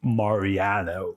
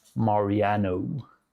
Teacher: English speakers tend to extend a lot of the vowels like the A, the O